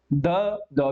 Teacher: द द भी हमारे दांतों के साथ टच हो रहा है